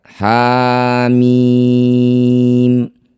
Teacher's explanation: ha berharakat fathah panjang disebut bacaan mad thobi'i. Panjangnya dua harakat